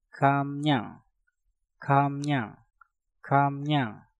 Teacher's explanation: Kam diakhiri dengan mium, setelah itu diikuti kata yang diawali dengan real, maka realnya kita rubah menjadi suara nien. Maka untuk kata ini pengucapannya menjadi kamnyang.